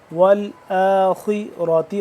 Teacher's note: خا موٹا را موٹا، والآخرة